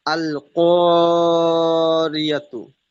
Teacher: রর নিচে জের এসেছে, তাই রকে বারিক করে পড়বো।